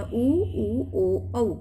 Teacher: एक होता है वृत्ताकार, एक होता है अवृत्ताकार। वृत्ताकार जिसको बोलते समय मुंह क्या हो जाए, हमारे ओठ गोल आकृति में हो जाए तो वृत्ताकार में आता है ऊ, ओ औ।